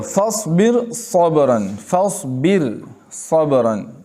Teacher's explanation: یہ را بھی باریک ہوگی اس لیے کہ اس سے پہلے زیر ہے، اور صاد حرف مستعلیہ میں سے دوسرے کلمے میں آیا ہے، اس را کو باریک ہی پڑھیں گے۔